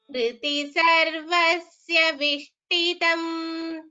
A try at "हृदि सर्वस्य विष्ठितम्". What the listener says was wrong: Here Vishtitam is Mahaprana, so Tha should be chanted properly. Hridi Sarvasya Vishtitam.